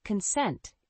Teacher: the word consent has two syllables with the stress on the second syllable